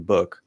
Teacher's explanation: it's like a bridge between ooh and uh